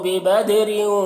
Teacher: بِبَد میں دال میں قلقلہ کریں گے، را کو باریک پڑھنا ہے